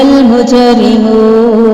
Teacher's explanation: جیم پہ کلکلا کریں گے. را کو باریک کریں گے. ہونٹ گول کریں گے. مد اصلی ہے اور وقف کی صورت میں مد عارض وقفی ہے.